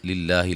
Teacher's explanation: لفظ اللہ کے لام کو باریک پڑھیں گے، اس سے پہلے زیر ہے